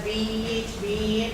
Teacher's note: it is close and more front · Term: long E